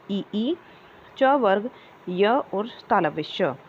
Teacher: तालु और जीभ के स्पर्श से बोले जाने वाले वर्ण होते हैं